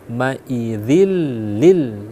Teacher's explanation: dia dibaca idgham bila ghunah artinya dibaca dengan tidak dengung maka di sini maidillil jadi seakanakan itu dia ee langsung nempel